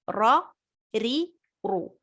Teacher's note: را میں ایک وائبریشن آنا ضروری ہے